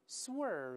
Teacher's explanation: 派上叫作用啊。好，这是几个▁over。跟▁under▁相关的这个动词都是成对出现的，咱们可以一块把它记住就好了。这个低估▁over▁and▁underestimate▁这个词我们就看到这儿。下面一个比较重要的词，咱们来看一看突然拐弯，突然转向，一般指什么车呀、船呢、飞机呀，拐弯。我们大声再读一下这词▁swerve。这个像▁W▁一样的这个音呢，是上牙是两个嘴唇相碰方，喔喔。 最后这个字母▁V▁呢是上牙触下唇